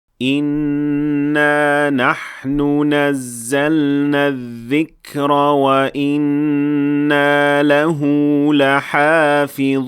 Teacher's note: we have 3 instances of natural med, which we are supposed to elongate for 2 counts. But we also have 2 instances of idgham, or nun mushaddada with ghunnah, of also 2 counts.